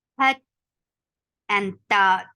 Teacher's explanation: For fatha open your jaws. The sound is short, but before the sound there is a ha sound, and that you have to make.